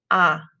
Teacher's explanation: a the name anna starts with the letter a a but in spanish that letter is not a e it's ah and i don't move my jaw or my lips at all ah keep it fixed that will really help you sound